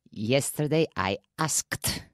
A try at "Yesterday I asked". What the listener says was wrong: Good. Asked. Asked.